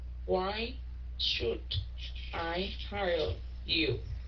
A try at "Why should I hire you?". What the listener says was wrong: Yeah, cái chữ should, yeah, phải cong lưỡi.